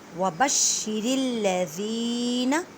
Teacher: زال کو نرمی سے ادا کریں اور زال کو ایک الف کی مقدار میں کھینچ کر پڑھیں کیونکہ یا مدہ کا قاعدہ ہو رہا ہے۔ · را کو باریک پڑھیں کیونکہ را کے نیچے زیر ہے، را کو لام مشدد کے ساتھ ملائیں۔